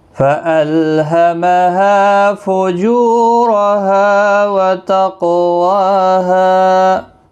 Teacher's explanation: قاف مستعلیہ ہے، ساکن بھی ہے، اس پر قلقلہ بھی ہوگا